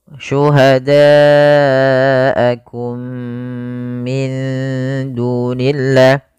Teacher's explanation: Kemudian mim mati bertemu dengan mim. Ini merupakan bacaan idgham mimi, yaitu mimnya dimasukkan kepada mim yang kedua dan ditahan.